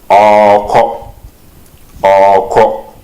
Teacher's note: we double the vowel of the pronoun wo, so it will become woko, or just elongate the vowel and then add the verb. So in written we write woreko, but in speaking we say woko.